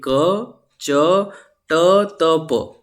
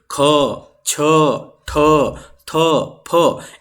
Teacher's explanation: इनको बोलने में महाप्राण लग रहे हैं, मतलब ज्यादा वायु आ रही है